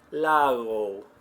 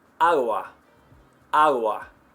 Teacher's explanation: the G between 2 vowels is very soft in Spanish